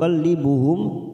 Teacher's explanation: mim sukun ini kita baca jelas tanpa mendengung karena bertemu dal namanya izhar